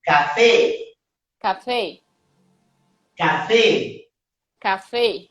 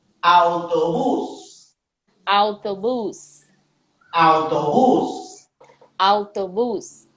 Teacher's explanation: A sílaba tônica sempre vai ser a última ou a primeira, olhando de lá para cá.